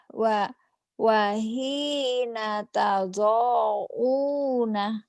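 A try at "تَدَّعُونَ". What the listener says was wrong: Tado pendek. Wahina tad'una.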